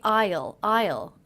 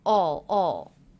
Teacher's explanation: i used the aw as in law vowel sometimes all sometimes I'll ride so I reduced the contraction which